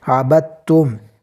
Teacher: جیسے عبدتم کے اندر آپ دیکھ سکتے ہیں کہ با کے اوپر حرکت ہے، دال ساکن ہے اور تا جو ہے وہ مشدد ہے، تو یہاں پر دال کو چھوڑ دیا جائے گا اور تا کو پڑھا جائے گا. جیسا کہ عبدتم، دال جو ہے وہ ساکن جو ہے وہ حذف کر دیا گیا ہے.